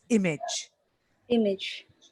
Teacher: But the stress is on the first syllable, so it's image.